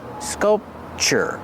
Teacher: The first vowel is short, use the sound like cup and up